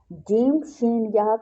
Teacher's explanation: جیم، شین، یا زبان کے درمیان اور تالو کے درمیان سے ادا ہوتے ہیں۔ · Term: حروف شجریہ